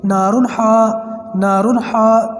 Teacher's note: حروف حلقی جو 6 ورڈز ہیں، جب یہ 2 زبر 2 زیر 2 پیش یا نون ساکن کے بعد آئیں گے تو اس نون ساکن یا تنوین کی آواز ذرا بھی لمبی نہیں ہوگی، جلدی پڑھیں گے نارمل پڑھیں گے